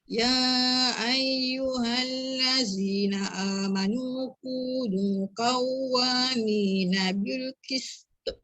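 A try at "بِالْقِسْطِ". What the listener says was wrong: Cuma dia terkurang tebal. Huruf ta tebal. Bil qist. Istiqlaq.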